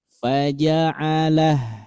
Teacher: Ketika kondisinya berhenti, faja'alahu, hu yang asalnya panjang menjadi sukun.